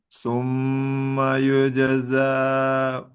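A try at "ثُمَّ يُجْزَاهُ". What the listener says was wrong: kepanjangan.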